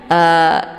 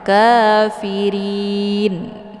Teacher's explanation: Jadi pangkal lidahnya tidak boleh terangkat ke langit karena ra ini tidak boleh dibaca tebal, ya. Jadi ri karena berharokat kasrah barisnya. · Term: dibaca tipis